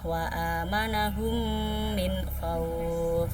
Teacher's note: Idgham mimi itu apabila ada huruf mim sukun bertemu dengan huruf mim. Cara membacanya dimasukkan dan didengungkan 2 harokat.